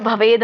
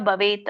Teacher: ಇದೆ ಅದು ಭವೇತ್ ಅಂತ ಬರುತ್ತೆ ಕೆಲವೊಂದು ಹೇಳುವಾಗ ಭವೇದ್ ಅಂತ ಹೇಳ್ತಾರೆ ಯಾಕಂದ್ರೆ ಕೂಡಿ ಹೇಳುವಾಗ ಭವೇದ್ ಅಂತ ಆಗುತ್ತೆ ಬಿಡಿಸಿ ಹೇಳುವಾಗ ಭವೇತ್ ಅಂತ ಹೇಳ್ತಾರೆ